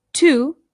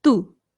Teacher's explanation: the t in Spanish is much like the D it's softer than it is in English so this is not to it's to which again you can